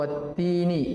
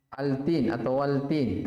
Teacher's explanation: Jadi kalau qamariyah alnya dibaca jelas, kalau syamsiyah tidak dibaca jelas. Dalam artian idgham.